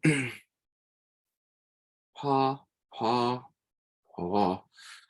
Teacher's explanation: It kind of between a B and a P. It's not exactly either.